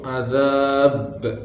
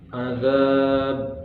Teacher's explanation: Cara membacanya yaitu pantulan huruf qalqalahnya itu sangat kuat, yaitu azab, dan nafas tertahan.